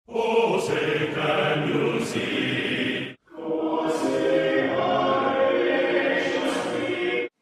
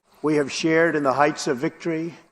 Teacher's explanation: In the words shared, hard, and work, most Brits will not pronounce the R sound, but most Americans will.